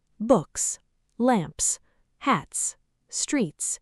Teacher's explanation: After voiceless sounds, it's pronounced like s